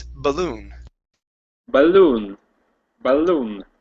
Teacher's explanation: The stress is on the end of the word. Instead of balloon, it's balloon.